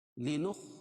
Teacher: خا کو موٹا پڑھیں گے حروف مستعلیہ میں سے ہے